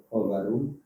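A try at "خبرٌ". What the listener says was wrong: Tanwinkan khobarun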